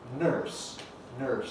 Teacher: In Scottish English we get nurse, which is just like cup you drink from, strut, plus an R, nurse, nurse, which is what the spelling suggests, nurse. But in American English and in the west of England, the R coalesces with the vowel to give you nurse, nurse, and you get an R-coloured vowel, r, nurse. Well, that's a strange sound, and in English, we've simplified things by losing that R coloration, leaving behind R, nurse, nurse.